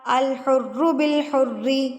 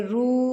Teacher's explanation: اب یہاں پر دیکھیں میں نے حرو کو نہیں کھینچا کیونکہ یہاں پر میرے پاس واو ساکن موجود نہیں ہے. اگر یہاں پہ واو ساکن موجود ہوتا تو ہم اس کو پڑھتے رو.